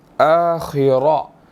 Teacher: خا بھی موٹا ہے اور را بھی ہم نے موٹا ادا کرنا ہے